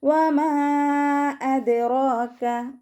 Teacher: വാവ് ഉച്ചരിക്കുമ്പോൾ ചുണ്ടുകളൊന്ന് സർക്കിൾ ചെയ്ത് കൊടുക്കുക.